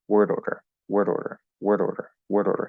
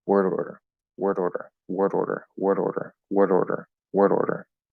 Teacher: most of the time i'm not getting a solid d um and a lot of the time i say that i'm not even using the tip of my tongue i'm just using the sides of my tongue and tapping there